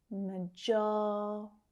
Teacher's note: That second syllable is stressed. Majority. And you can hear that I'm pronouncing that flap T sound at the end.